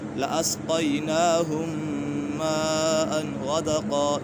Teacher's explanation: میم سکت کے بعد دوسری میم آ گئی ہے تو یہاں ادغام شفوی ہوگا، اور میم مشدد ہے، اس سے جمع کے ساتھ میم مشدد ہے، میم مشدد میں ہمیشہ غنہ ہوتا ہے۔